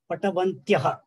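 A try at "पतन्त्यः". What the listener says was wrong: No, not Ba. Patantyaha. Patanti is a Pratipadikam. Patanti is a Pratipadikam.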